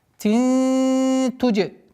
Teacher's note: А здесь калькаля у нас. Так как джим относится к правилам калькаля.